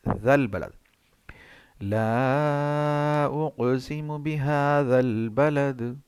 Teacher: یہ زال ہے، یہ زا نہیں ہے، یہ زال ہے، یہ نرم ادا ہوگا اور یہ لام موٹا نہیں ہوگا۔ یہ جو دو الف ہیں یہ یہاں پہ غائب ہو جائیں گی۔